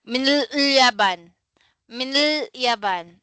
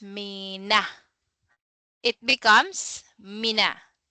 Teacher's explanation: So instead of min, to avoid the hardship of pronouncing two sukun combined together, it becomes mina